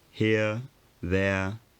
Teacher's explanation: both upper and lower class speakers in london still had a kind of central vowel or glide as an echo where the sound used to be for upper class speakers the tongue was slightly higher here there